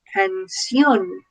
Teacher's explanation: nos encontramos con una I y una O, las cuales forman el diptongo. Y en este caso la O lleva la tilde, lleva el énfasis.